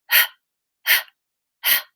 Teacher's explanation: Put your hand on your larynx gently, and I want you to say, can you feel it? H is an unvoiced sound. You can't feel it in there. It doesn't vibrate.